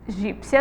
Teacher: Egípcia também aí, temos aí uma sílaba tônica na penúltima sílaba da palavra. E elas são, ó, paroxítonas terminadas em ditongo.